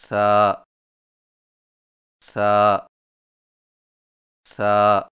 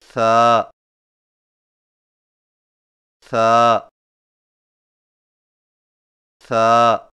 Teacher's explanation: ثا کی ادائیگی میں زبان کی نوک کو سامنے والے اوپر کے دو دانتوں کے اندرونی کناروں سے نرمی سے لگا کر باریک آواز میں پڑھیں